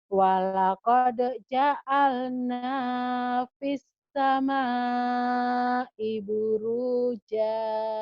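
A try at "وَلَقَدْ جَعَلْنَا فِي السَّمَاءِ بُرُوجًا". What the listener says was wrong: Tapi Ibu masih utang ain ya. Ja'alna. Ainnya. Terus fis sama'i.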